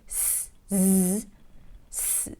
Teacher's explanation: you're making the Z sound, that's air with vibrations. And here, it's easy for you to control between the voiced and voiceless sound.